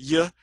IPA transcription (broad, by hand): j